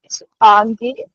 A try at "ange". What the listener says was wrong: Ange, apa e नहीं बोल रहे, last e नहीं बोल रहे, apa आड़ी, not speak that. Ange,